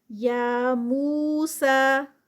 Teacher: یا پہ 2 کاؤنٹس، مو پہ 2 کاؤنٹس، سا پہ 2 کاؤنٹس، تینوں جو ہیں وہ 2 کاؤنٹس کی ہیں